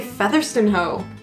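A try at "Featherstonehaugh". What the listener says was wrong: Featherstonehaw. haw. Featherstone Haw. Featherstone, although not stone, it's stun. Featherstone Haw.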